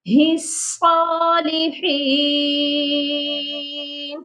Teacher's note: وعلا عباد اللہ الصالحین، لاسٹ میں بھی ایک غلطی ہے جو کر دیتے ہیں بہت سے لوگ، ہی صالحین، ہی صالحین نہیں ہے، ہی کو صاد کے ساتھ ملانا ہے